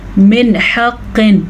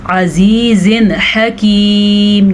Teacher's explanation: یعنی نون کی آواز کو ہم نے ظاہر کر کے پڑھا، نہ تو چھپایا ہم نے، نہ غنہ کیا